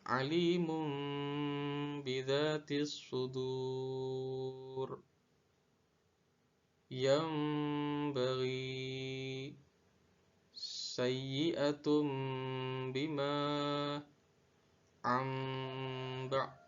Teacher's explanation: suara nun mati dan suara tanwin semuanya diganti menjadi huruf mim karena pada contoh-contoh ini tanwin maupun nun mati bertemu dengan huruf ba, sehingga harus diganti suara mim, dan ini adalah contoh bacaan iklab.